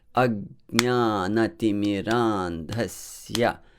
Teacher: So even though A is a short vowel, yeah, you still pronounce it, you still give a weight to that syllable. It still sounds long. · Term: heavy